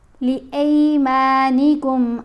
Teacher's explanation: وَلَا تَجْعَلُوا اللَّهَ عُرْضَةً لِأَيْمَانِكُمْ الف کے اوپر زبر ہے، ساتھ یا ساکن ہے، تو یہ حرف لین ہے. اب الف زبر یا ای آواز بنے گی. الف زبر آ آواز نہیں رہے گی، آ آواز نہیں، ای.